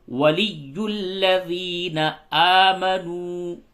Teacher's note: یا کے اوپر تشدید ہے، اس کو تھوڑا سختی کے ساتھ پڑھیے